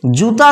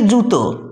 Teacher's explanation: জীব কি করলো, উচ্চ স্বরধ্বনিটাকে বলল, কিন্তু আর নিচেতে অতটা না নেমে আটাকে ও করে দিল, অর্থাৎ উচ্চ মধ্যতে পরিণত করে দিল